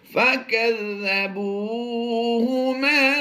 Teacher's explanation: واو مدہ ہے، یہاں پر بھی لمبا کریں گے اور میم الف زبر ما میں بھی ہم لمبا کر کے پڑھیں گے. دونوں ہی حروف مدہ ہیں.